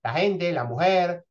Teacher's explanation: se articula más suave que en España o incluso claramente aspirado